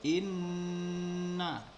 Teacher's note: nun yang double atau dua nun, sehingga kemudian dibaca dengan gunnah atau berdengung. Jadi membacanya adalah inna, ditahan dulu, inna fi.